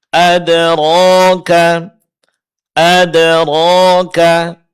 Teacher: Di sini ada dua keadaan. Ro ditebalkan karena dia berbaris atas dan juga karena ada yang berbaris depan.